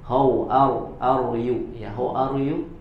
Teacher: huruf R dalam bahasa Inggris itu posisi ujung lidah tidak sampai menempel ke bagian langit-langitnya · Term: huruf R dalam Inggris